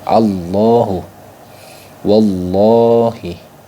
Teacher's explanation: ketika ada terdapat lafaz Allahu yang diawali harakat fathah ataupun damah maka dibaca tafhim maksud tafhim itu apa yaitu tebal yaitu dibaca Tebat Allahu wallahi